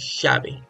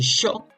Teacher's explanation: Usan mucho la SH para decir lo que nosotros decimos llave.